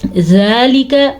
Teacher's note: لام اور کاف کو لمبا نہیں کریں گے